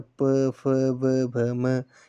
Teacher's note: ओष्ठ यानी कि ओठों से, दोनों ओठों से, तो प, फ, व, भ, म, इनका जो उच्चारण हो रहा है वे ओठों से हो रहा है।